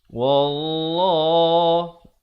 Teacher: Lafz jalalah dibaca tebal 2 harakat.